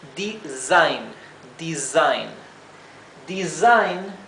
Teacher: eh cuando no está duplicada y se encuentra entre dos vocales la s se pronuncia sí como un zumbido no se pronuncia como la s suave